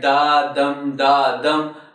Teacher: pattern of the syllables it is as it's on your screen unstressed syllable and a stressed syllable and then unstressed syllable and a stressed syllable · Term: iambic